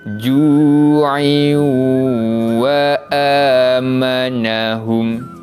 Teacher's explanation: kita memasukkan bunyi bacaan tanwin pada huruf selepasnya iaitu huruf waw dan dibaca dengan bacaan dengung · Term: idgham bi gunnah